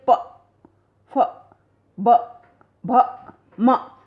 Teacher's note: ऊपर और नीचे के जो होठ हैं वो दोनों आपस में मिल जाते हैं, और होठों के मिलने के बाद फिर जब खुलते हैं तो एकदम से फिर ये प, फ, ब, भ, म, तब जाकर ये ध्वनियाँ निकलती हैं। · ये ओष्ठ ध्वनियाँ कहलाती हैं, क्योंकि होठों के आपस में मिलने से और फिर खुलने से ये ध्वनियाँ निकलती हैं